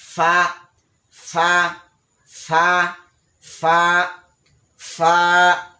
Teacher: ফা ফা উচ্চারণ করার সময় সামনের উপরের দুই দাঁতের আগা, নিচের ঠোঁটের পেট, সামনের উপরের দুই দাঁতের আগা, নিচের ঠোঁটের পেট।